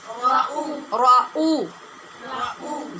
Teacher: را کے بعد حمزہ ہے، اس کو تحقیق سے پڑھنا ہے